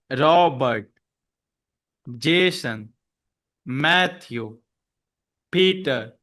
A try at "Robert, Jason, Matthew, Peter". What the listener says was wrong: good, good. You have the stress. Bum, bum.